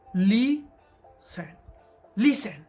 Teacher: listen tiene el acento en la penúltima sílaba